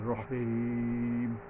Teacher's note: লম্বা হা টেনে পড়তে হবে, গলায় কিছুটা শোষ শব্দ ভাব আসবে